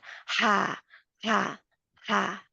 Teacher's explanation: गले का दरमियानी हिस्सा, हल्क का दरमियानी हिस्से से रगड़ के आवाज़ इसकी निकलती है। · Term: हलवे वाली हाँ